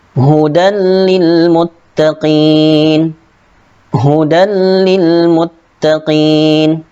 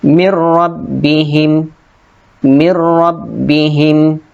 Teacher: Idgham bila gunnah, memasukkan dengan tidak dengung.